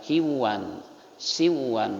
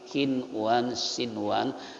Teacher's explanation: nggak bisa dibaca kiwan siwan tapi kinwan sinwan karena nunnya satu kata dengan huruf shad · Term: izhar hakiki